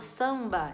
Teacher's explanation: quando eu falo samba esse Sam ele sai pelo nariz se você puser a mãozinha aqui ó você vai fazer Sam